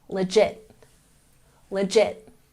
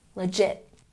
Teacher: We've got stress on the second syllable, legit, legit.